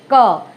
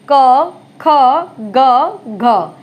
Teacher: ये जो जीवा का जो पिछला भाग है ये तालु को स्पर्श करता है। जैसे का बोलेंगे, क।